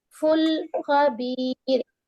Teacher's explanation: لام قلقلہ لیٹر نہیں ہے، لام ساکن ہے، وہاں پر پاؤز دیں گی تھوڑی سی ٹھہر کر